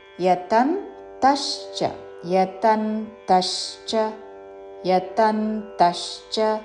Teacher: దానిలో తా మీద ఆఘాత పలుకుతూ